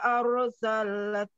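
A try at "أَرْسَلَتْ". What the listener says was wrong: Lamnya arsalat. Kenapa ditekan?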